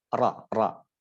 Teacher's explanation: lidah bagian belakang sama sekali tidak bersentuhan dengan langit-langit mulut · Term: huruf ro